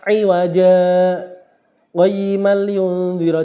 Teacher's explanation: Jadi pas 'iwaja qayyimal yunzira. Jadi 'iwaja itu berhenti tetapi tidak bernafas, ya. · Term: saktah